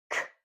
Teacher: So that means that k is an unvoiced sound. Remember, when we make the k sound, our tongue is at the top towards the back of our mouth. When our tongue drops, it kicks the sound out. · Did you feel a sound or a vibration in your throat? Neither did I. So that means that k is an unvoiced sound. Remember, when we make the k sound, our tongue is at the top towards the back of our mouth.